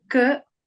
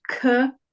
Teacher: So you have k, k. So k, not aspirated. K, it is aspirated. It's deeper in your throat.